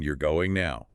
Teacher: But if they deliver it with the correct prosody-like, with stress on the word going and a rising tone at the end. It becomes a shocked question, "You're going now." Yeah.